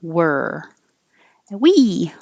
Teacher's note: really not any vowel you're just putting your tongue in the r position and making er